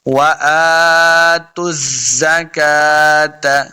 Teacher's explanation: واو کے اوپر اپنے دونوں ہونٹ گول ہوں گے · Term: واو کا مخرج